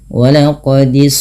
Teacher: Jangan dibaca walaqadis jangan dengan huruf Sin tapi dia huruf Shad wqodis tebalkan sedikit